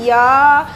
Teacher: इसका उच्चारण स्थान है तालव्य